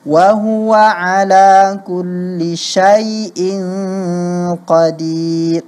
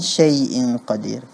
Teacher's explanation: Bukan syai'in qadir. Jangan kedengaran seperti suara E jadinya, Fathahnya itu ya